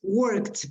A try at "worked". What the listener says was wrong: Be careful with the pronunciation of endings of EDs. No worked. Worked. Worked with a T.